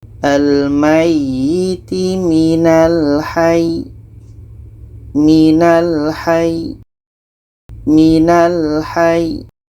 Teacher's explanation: ketika berhenti ya tasydid. Maka cara bacanya kita tekan. Kita tekan, setelah itu matikan ya-nya.